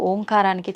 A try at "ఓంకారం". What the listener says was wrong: అది ఓంకారం కాదు, ఔంకారం. ఔం అని ఉచ్చరించినప్పుడు అకారము ఉకారము రెండూ పలకబడి మూకారం దీర్ఘమవుతుంది.